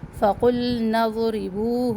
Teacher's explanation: فقلنا ضربوه ضاد موٹا پڑھنا ہے، را کو باریک پڑھنا ہے